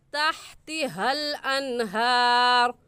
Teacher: ये हा, ये हलक का आखिर जो सीने की तरफ है वहाँ से निकलती है, इसे सीने से निकाल कर पढ़ेंगे।